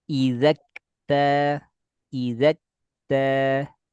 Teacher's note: Jadi kalau kita baca izakta nggak ada nafas terdengar pada kaf, harus terdengar nafas karena termasuk di fahassahu syakhsun sakat. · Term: percikan angin